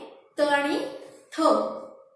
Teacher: ज्यांचा उच्चार करताना जीभ दाताला स्पर्श करते त्याला दंत्य म्हणतात. त्यातली 2 व्यंजने त आणि थ.